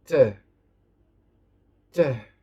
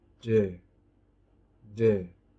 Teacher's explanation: alveolar plosive. For the voiceless, t, t. And for the voiced, d, d.